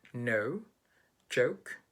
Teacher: it's not that open in comparison to the american goat vowel